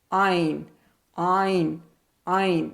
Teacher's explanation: اور یہ موٹی آواز نہیں ہے، حالانکہ ہلکی آواز جو ہے وہ ان میں سے کچھ جو ہیں وہ موٹی ہیں، لیکن یہ دونوں ہی موٹی نہیں ہیں، نہ آ کی نہ آئین کی آواز بھی موٹی نہیں ہے، نرم ہے، رواں ہے